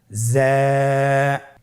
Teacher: জিহ্বার আগা সামনের নিচের 2 দাঁতের পেট ও আগার সঙ্গে লাগিয়ে উচ্চারিত হয়